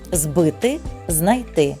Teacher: перед дзвінкими приголосними префікс з вимовляється дзвінко